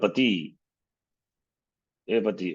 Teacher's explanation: Thus the word Pati, Pati, O two lords, as this is Amantrita vocative. So it has Udata Swara on the first syllable.